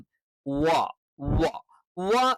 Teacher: അറബിയിലുള്ള വ അതല്ല. രണ്ട് ചുണ്ടുകൾക്കിടയിൽ, രണ്ട് ചുണ്ടുകൾ വൃത്താകൃതിയിൽ വെച്ചുകൊണ്ട് വ എന്ന് തന്നെ പറയണം.